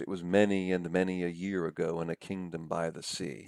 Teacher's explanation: You can really hear that rolling anapest.